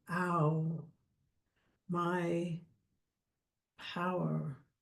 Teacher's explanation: And is a dip thong. It's ah and u together.